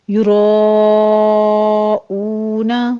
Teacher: یراؤون مد متصل واجب ہے، رو کو پر پڑھتے ہوئے 5 کاؤنٹ کر لیں گے، او میں 2 کاؤنٹ کریں گے، واو مدہ ہے۔